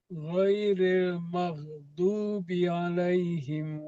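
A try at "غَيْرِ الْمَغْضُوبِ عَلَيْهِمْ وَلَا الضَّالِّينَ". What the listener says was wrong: Di mal. Mal sama ainnya ditarik lagi. Alaihim mal.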